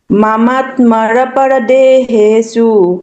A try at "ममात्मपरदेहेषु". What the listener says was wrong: मर कहाँ है? मर कहाँ है?